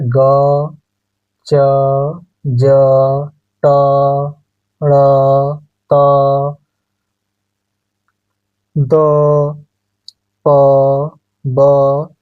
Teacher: मुंह पे हाथ लगा कर थोड़ा सा बोलिए तो आप देखेंगे कि थोड़ा कम निकल रहा है। हवा तो निकल रहा है मगर कम निकल रहा है